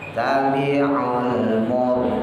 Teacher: rohnya tebal karena jatuh setelah rokat doma